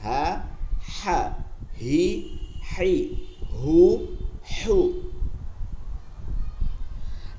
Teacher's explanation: লম্বা হা, হলকের মধ্যখানে নিয়ে যেতে হবে